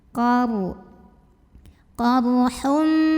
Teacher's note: Berikutnya ada ro sukun, ini pun dibaca secara tafkhim karena huruf sebelumnya fathah. Dibacanya tebal, pangkal lidah diangkat.